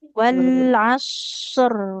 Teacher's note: Huruf shadnya mengalir, rnya juga mengalir. Tapi antara sad dengan ro lebih lama mengalir huruf shad. Bunyinya huruf hanya sebentar. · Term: huruf shot